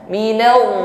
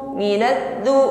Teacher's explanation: Minaddu, ini masuknya huruf dal. Kalau wad lebih berat diucapkan dan bunyinya lebih tebal.